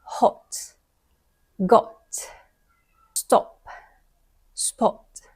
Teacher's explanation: another example of a vowel is the short o so again in British English they make it short they don't extend it they don't elongate it like the American accent